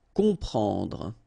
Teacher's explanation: You've got OM, and after that you've got a consonant, so you will get the sound on, nasal, okay? You don't hear any M here, okay? It's on.